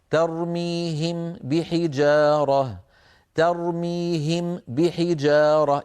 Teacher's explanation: أطبق شفتي للميم ثم أعود فأطبقهما مرة أخرى لمين؟ للباء، فيصير النطق ارتفاعتين · فبدلا من هذا العمل المعقد أن ترتفع الشفتان مرتين عن حرفين كلاهما من الشفتين، الميم من الشفتين والباء من الشفتين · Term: ميم ساكنة وبعدها باء